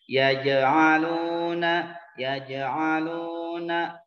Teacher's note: Jim itu termasuk huruf qalqalah, harus mantul dan tidak becek.